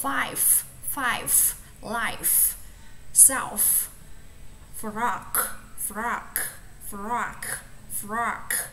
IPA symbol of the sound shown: f